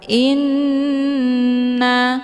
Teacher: hamzahnya dileburkan ke dalam huruf nun dengan cara ditekan kemudian ditahan lebih kurang 2 kali ketukan. Inna, hukum bacaan ghunnah musyaddadah dibacanya sambil didengungkan.